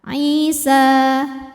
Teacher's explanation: Alif didahului fathah maka matobi'i panjang 2 harokat. Isa. Namun dibaca panjangnya hanya saat berhenti saja.